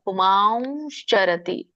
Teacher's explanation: ಒಂದು ಉಚ್ಚಾರಣೆ ವ ಬರುತ್ತೆ ಮೂಗಿಂದ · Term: ಅನುಸ್ವಾರ